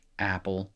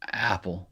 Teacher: the sound that your glottal stop makes, your glottis makes when you begin a word with a vowel